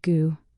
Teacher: Chinese speakers often drop the last sound, so good sounds like goo.